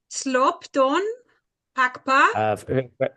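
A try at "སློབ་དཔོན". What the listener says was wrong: Forget the S. So without no S, just say lob.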